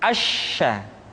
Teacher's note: sya dikeluarkan dengan cara mengangkat Tengah lidah kita ke langit-langit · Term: huruf sya